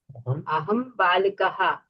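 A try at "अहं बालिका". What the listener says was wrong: Madam, no visarga, madam. This is Striling Sabda. Lata, late, lata.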